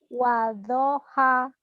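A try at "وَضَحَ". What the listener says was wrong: Tuh kalau H kecil kamu bisa. Wadhoha itu tadi yang tadi kamu ucapkan H gede semuanya H kecil. Wadhoha H. Nah ini H gede.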